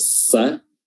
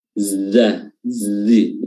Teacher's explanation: huruf sa atau sin itu lebih ditekan pertemuannya, namun huruf za lebih tidak ditekan